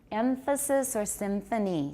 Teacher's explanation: with alveolar there allophonic there allophones of the alveolar nasal or we may also have another kind of funny nasal that's allophonic labial dental